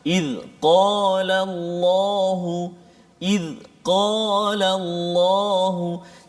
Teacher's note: Qaf ni dia dekat dengan anak tekak.